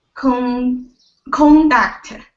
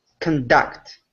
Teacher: when it's a noun, the stress is on the first syllable, and when it's a verb, it's on the second